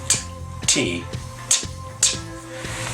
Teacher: you're taking the tongue and putting it against the back of your front teeth and you're letting air go after building up pressure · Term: explosive consonants